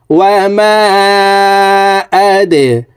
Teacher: ওয়া মা, হামজা দাল জবর আদে, দালকে নিচের দিকে ধাবিত করে ধাক্কা দিয়ে উচ্চারণ করব, কারণ দাল কলকলার হরফ।